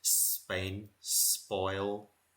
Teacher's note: sort of like the hard P and it's just a mixture between the B and the P and this is the same sound of a P in Spain